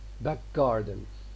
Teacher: Normally in back garden, this g tends to be realized as voiceless